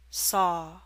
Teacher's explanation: Your mouth is more open for the A in saw.